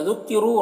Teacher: ज़ुक्किरू रौ को पुर पढ़ेंगे, वाव मद्दा एक अलिफ के बराबर खींचेंगे।